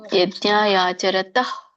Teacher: ತಹ ಎಂತ ಸ್ವಲ್ಪ ಹ ಕೇಳಿಸ್ಬೇಕು ಅಲ್ಲಿ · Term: ವಿಸರ್ಗ